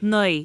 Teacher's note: So Munster they say lay instead of lee. Naoi. Right, so you don't get that kind of glidey sound.